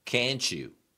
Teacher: 这 里 的 字 母 T 是 按 照 ch 音 来 处 理 的。